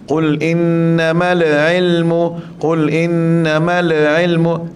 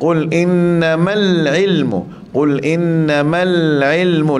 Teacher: lam tu mati tapi tak melantun